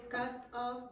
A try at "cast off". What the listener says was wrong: Now do you hear cast? I I'm not sure if you are saying OFF.